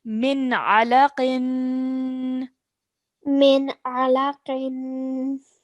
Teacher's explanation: So we're not lingering on the noon sound or anything. We're not staying on the noon sound for too long. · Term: clear noon sound